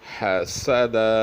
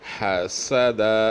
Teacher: سین کو سخت اور پتلا ادا کریں، اس طرح کے سیٹی کی سی آواز نکلنی چاہیے